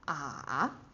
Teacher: So it starts kind of low, but not the lowest, because you're going to go low and go high again. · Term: third tone